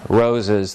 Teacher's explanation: in roses the first syllable is stressed but the second isn't